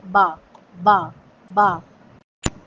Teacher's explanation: سب سے پہلے با کو دیکھ لیتے ہیں۔ با دونوں ہونٹوں کو ملانے سے ادا ہوتا ہے۔ جب دونوں ہونٹ آپس میں ملتے ہیں تو ادا ہوتا ہے با، با، با۔